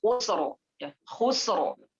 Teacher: ra-nya mati, sebelumnya huruf mati, sebelumnya huruf yang berharakat dhammah, maka ini terjadi huruf atau bacaan tafkhim, tebal, dibaca tebal.